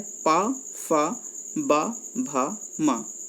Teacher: जब आप इनको बोलेंगे तो हमारे जो ओंठ हैं वो बंद हो जाएंगे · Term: ओष्ठ